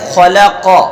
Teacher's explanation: بیچ والا حرف باریک ہے، باقی ادھر ادھر کے دونوں حرف موٹے پڑے جائیں گے